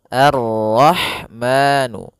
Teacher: Pada bacaan Ar-Rahman, di sini ada alif lam syamsiyah, yaitu alif lam yang ditulis tapi ia tidak dibaca, sehingga kita langsung masuk ke huruf ra